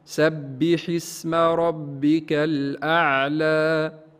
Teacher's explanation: كلمة الأعلى هنا مد طبيعي، ما نزيدوش في طول المد، لا نقول الأعلى كما نسمع من بعض المبتدئين أو من بعض الإخوة.